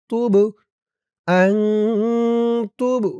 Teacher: এই বা কলকলার হরফ ধাক্কা দিতে হবে